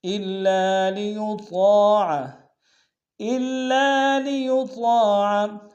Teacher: من رسول الا لیطاع، الا لیطاع، حمزہ کو لام کے سامنے لائیں گے، لام کے اوپر تشدید زور دیں گے، لام کے سالف مدہ ایک امتداد میں کھینچیں گے، یطاع میں طاء کے سالف مدہ ہے ایک امتداد میں کھینچیں گے، طاء کو موٹا ادا کریں گے